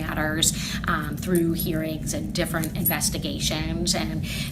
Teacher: she almost has that vocal fry that you hear from the Kardashians.